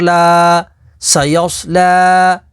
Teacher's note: لام کھڑا زبر لا، سایوس لا۔ لام کے اوپر کھڑی حرکات ہے تو اسے حروف مدہ کی طرح لمبا کر کے پڑھیں گے